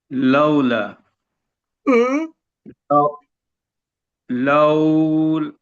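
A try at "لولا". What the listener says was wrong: কিভাবে লাউল হবে? এখানে থামলে তো আর লামের উপরে সাকিন হবে না।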